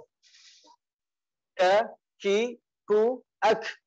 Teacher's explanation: dan dia itu untuk k itu masih ada desisannya